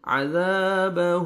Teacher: عذا الف مد ہے، ذال کو آپ نے 1 سیکنڈ کھینچنا ہے